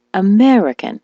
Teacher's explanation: the word American, as you know, is stressed on the me, American. So she was saying Americano.